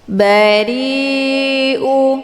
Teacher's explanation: dibaca panjang boleh empat atau lima kali ketukan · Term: mad wajib muttasil